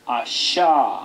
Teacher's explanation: hay que pronunciarla como si hacemos una sh inglesa, sh, pero abriendo las comisuras de los labios, como sonriendo, es la sh. Sha, asha.